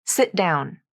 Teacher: t consonant and the next word down begins with a consonant this phrase will almost always be linked using a stop te in the first word sit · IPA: /ʔ/